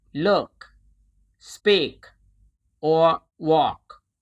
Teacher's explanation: In English, the K sound often releases a small puff of air at the end